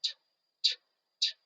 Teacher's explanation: If you put your fingers to your throat and you say t, t, t, you're not going to feel any vibration in your vocal cords. What that means is that this sound is voiceless.